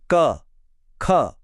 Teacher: क वर्ग की ध्वनि कंठ यानी गले से आती है।